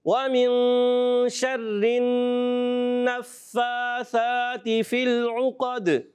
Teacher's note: ومن کا غنہ، یہاں اخفا غنہ ہے، پھر نون مشدد کا غنہ ہے